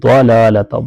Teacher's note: ضاد کو پر کر کے پڑھیں گے، حروف مستعلیہ میں سے ہے